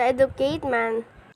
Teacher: again the student omitted the d sound in educated